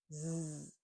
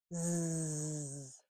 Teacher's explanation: So we know that Z is a continuous sound and we know that it's voiced. And we make it when our mouth is slightly open, our teeth are almost touching, our tongue is behind our top teeth, and when we make a little puff of air, our voices goes on.